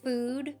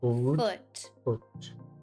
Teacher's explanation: Then relax into an uh which feels lower and more open. That way the ooh of food drops and relaxes into the uh of foot